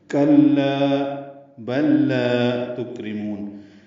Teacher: کلا بل لا تکرمون، کلا میں کاف باریک کے لام سے ملانا، لا الف مدہ ہے۔ بلا میں دونوں لاموں کا ادغام ہوا ہے، ادغام مثلین ہے، لا الف مدہ ہے، 2 حرکات لمبا ہے۔